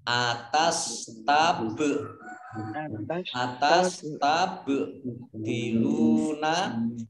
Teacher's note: Qaf fathah alif mad tabi'i panjang 2 harokat. Kemudian ba sukun bacaan qalqalah dibaca memantul.